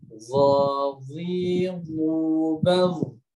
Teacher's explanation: yang membuat huruf zo tebal itu adalah lidah belakangnya naik